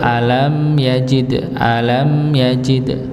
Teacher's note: Mimnya di sini punya sifat gunnah sedikit. Gunnahnya nakis.